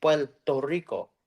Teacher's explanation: Puerto Ricans don't say their RS really well we say like an l sound